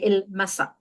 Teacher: in Standard Arabic it's ala with a glottal stop but in colloquial we tend to drop those glottal stops or the Hamza at the end of the word